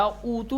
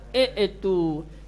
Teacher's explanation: قاعدتاً تو ضمہ دینا چاہیے تھا، اوتو پڑھنا چاہیے تھا، لیکن یہ کسرے کے ساتھ پڑھا جائے گا